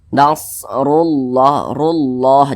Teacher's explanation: lafaz Allah di belakangnya ada huruf yang memiliki tanda baca dhammah, maka dibaca tebal. Nah, maka dibaca nasrullah, rullah, jangan rullah, jangan, tapi ditebalkan rullah begitu.